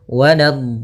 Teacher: Untuk mad lazim musaqqal kalimi atau kalimi musaqqal panjangnya 6 harakat, maka panjangkan dotnya dulu 6 harakat, kemudian sempurnakan di dotnya, kemudian baru masuk ke huruf lam